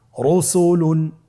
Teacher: র উপরে পেশে তাহলে র হরফটিকে মোটা করে পড়তে হবে